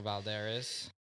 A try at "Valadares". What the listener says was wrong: It's Valadares. You said Baldares.